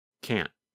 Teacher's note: The N sound, n, n, n, lasts longer than in the negative form. In fact, in the negative form, because the tongue and voice stop, there is almost no sound of the letter N.